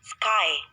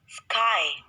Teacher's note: this diphthong begins with an open vowel which is between front and back